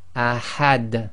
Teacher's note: So the dal again becomes sakin, you don't read the dhammatain, and you get the echo.